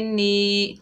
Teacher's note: नून के नीचे ज़ेर है, आगे या साकिन है, ये या मद्दा है, एक अलिफ की मिकदार खींच कर पढ़ेंगे